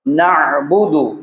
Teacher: اس میں عین جو ہے وسط حلق سے نکالیں گے ہم